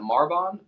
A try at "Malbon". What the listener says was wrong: Malbon. Is there an R in there? No, it's Malbon. It's Malbon.